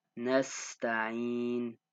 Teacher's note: So the sin is a letter of whistling. So it makes a s sound. It's one of the letters of whistling.